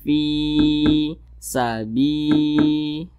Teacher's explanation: Nah maka huruf tersebut dibaca panjang nah ini kedua-duanya sama namanya Mad thbii'i panjangnya dua harakat atau kira-kira dua ketukan